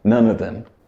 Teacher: Year great and none of them becomes none of them so instead of of it becomes more of an a sound